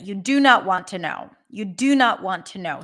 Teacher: all not is not a word that is reduced reduced okay not is a Content word so anyway it's going to be somewhat stressed you're not going to reduce it